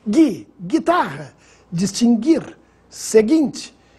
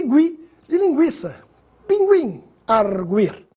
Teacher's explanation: vamos ver a diferença da pronúncia do gui mudo para o gui pronunciado